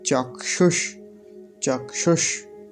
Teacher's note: क का तो बहुत हल्का सा उच्चारण आएगा क्योंकि हलंत है · यह ककार हलंत और मूर्धन्य सकार इन दोनों के मेल से बनता है इन दोनों की संधि करने से बनता है तो क्ष बोलेंगे